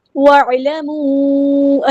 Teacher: واو کو ہم نے عین کے ساتھ ملا دینا ہے، حمزۃ الوصل ہمارا ڈراپ ہو جائے گا ، عین کو وسطی ہے لیکن مڈل تھروٹ سے ادا کرنا